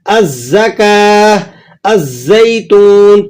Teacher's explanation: زا کو دیکھیں، الزکاہ، الزیتون، تو زا کی مثالوں میں آپ کو یہ بات سمجھ میں آ گئی کہ زا پر اگر لام تعریف داخل ہوگا تو آپ اسے نہیں ادا کریں گے